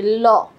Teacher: দুই পাশ থেকে যখন ল এর সময় বাতাস বের হয় এজন্য এটাকে বলে পার্ষিক বর্ণ